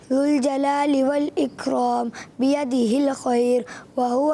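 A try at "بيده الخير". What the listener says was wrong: بیدہ الخیر, را باریک کریں گے,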